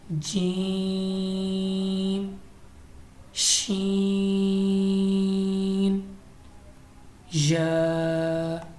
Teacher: زبان کے درمیان اور تالو کے درمیان سے ادا ہوتے ہیں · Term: حروف شجریہ